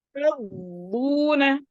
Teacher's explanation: अलिफ सगीरा को खींचेंगे, ये हरफ मद है।